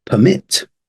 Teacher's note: stress is on the second one for the verb